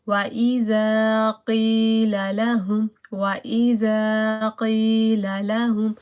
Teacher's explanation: وَإِذَا قِيلَ لَهُمْ قاف from the darkest part of the mouth and sal slightly, and there is a 1 second of the elongation because of alif mada